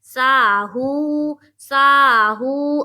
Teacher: واو ساکن سے پہلے پیش ہے، اور اس کو ایک الف کے بقدر کھینچیں گے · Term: واو مدہ